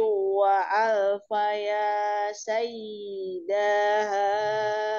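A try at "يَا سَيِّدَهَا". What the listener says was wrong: Sayyidaha, dahnya pendek.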